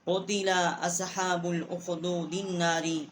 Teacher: اور دال کو ہم نے نون کے ساتھ جو ہے مشدد کیا ہے، اور یہاں ہم نے غنہ بھی کیا ہے